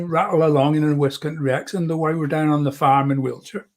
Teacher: you roll out the r's a lot more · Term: west country accent